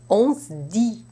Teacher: But change that to on se dit, where the D voices the S into a Z type sound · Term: regressive voicing